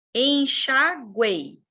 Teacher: Verbo enxaguar aqui conjugado, ó. De novo, eu tenho uma semivogal U, uma vogal E e a semivogal I